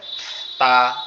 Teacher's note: তাটা হচ্ছে আমাদের জিহ্বার আগা দুই দাঁতের গোড়ার সঙ্গে লাগবে, লেগে উচ্চারিত হবে তা এরকম ভাবে।